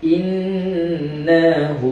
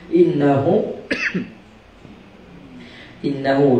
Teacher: Ha dhamir bertemu dengan selain daripada huruf hamzah, maka dibaca dengan 2 harakat. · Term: mad silah qasirah